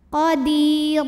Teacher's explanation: karena ada Ya Sukun didahului baris kasrah maka cara bacanya dipanjangkan dua harakat Qodir ro dibaca secara tafkhim karena ro berbaris tanwin fathah maka